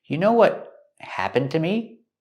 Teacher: We hear that T in what is a stop T.